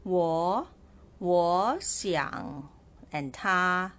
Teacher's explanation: ta you notice how I read this word war and Xiang so I changed the word War to Second tone